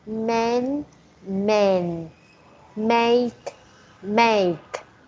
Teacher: use a your mouth move a like that like more open you start with more open a and then it becomes smaller